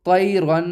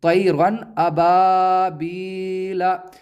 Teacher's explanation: अब हम इसे ऐसा नहीं पढ़ेंगे तैरन, गुन्ना नहीं करेंगे बल्कि बग़ैर गुन्ने के साथ पढ़ेंगे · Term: इजहार